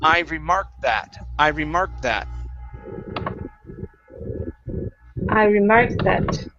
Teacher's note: we can take the T sound and combine it with the TH. Okay, so when we do that, we're going to use a stop T, then move into the TH sound.